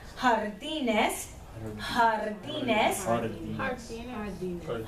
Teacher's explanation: It is harder, stronger version of the English H sound there